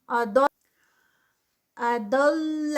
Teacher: اثر، اسر، اثر. اضل، اضل، ضاد ہیوی اور لام لائٹ ہے، اس کو ہیوی نہیں کرنا